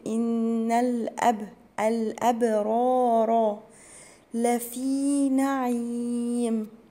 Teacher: الأبرار، هنا الباء مقلقلة عليه عشان هي ساكنة، والراء هتبقى مفخمة علشان هي مفتوحة، أقول إن الأبرار لفي نعيم.